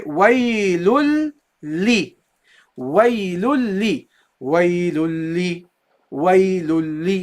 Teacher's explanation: You drop the tanween. You don't say waylun. You say waylul. So you replace the noon with a lam.